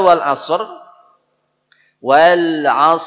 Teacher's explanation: AS bukan as as jadi kalau saya Gambarkan dalam mulut saya suara es-nya itu bergemuru naik ke langit-langit naik dulu ke atas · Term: huruf Shad